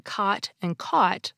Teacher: Now, in my dialect, the vowels in cot and caught are distinct. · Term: cot-caught merger